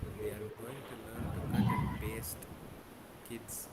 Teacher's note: We have to leave a small gap after paste.